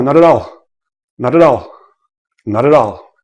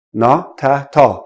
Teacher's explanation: Now, another thing is when a word ends in a consonant and the next word begins in a vowel, make sure you roll it in, right? Roll the consonant into the vowel and separate the syllable before.